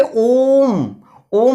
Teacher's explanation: ये ओ को खींचने का काम कर रहा है, तो ये यहां पे ओम, ओम, ओ को लंबा खींचा, ओ को उतनी बार लिखा नहीं गया लेकिन ओ को उच्चारण को उतनी बार खींचा जा रहा है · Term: लुप्त स्वर